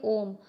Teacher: स्वर के उच्चारण में हस्व स्वर से लगभग तिगुना समय लगता है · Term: प्लुत स्वर